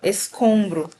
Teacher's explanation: Olha só, eu tô falando um som só, um som anasalado